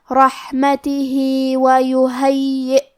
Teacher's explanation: کلمت رحمتہ میں حرف الحا کی ادائیگی حلق کے نیچے والے حصے سے ہے. آخری میں ہا کے نیچے کھڑی زیر ہے، یہاں حکم ہے مد صلہ صغرا.